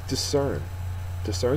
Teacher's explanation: discern is a verb second syllable is accented and it is to see clearly or to recognize and uh